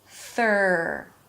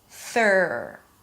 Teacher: For the R, the tongue pulls to the middle of the mouth, the lips round a bit, and the sides of the tongue push the insides of the upper teeth.